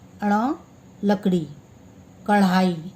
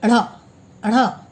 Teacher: इसमें जीभ पीछे जाकर मूर्धा को स्पर्श करके झटके से वापस आती है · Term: उच्चिक्त व्यंजन